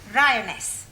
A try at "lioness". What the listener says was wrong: No, l. You're not saying it right. Try saying lioness.